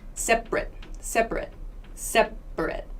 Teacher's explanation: speech this a right here becomes a schwa separate separate separate so it's a very quick short sound yeah that's the schwa it's not like any other vowel